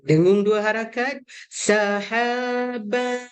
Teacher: kalau nak sembunyi Dia kena ada elemen bunyi Nun tu tapi tak sampai jelas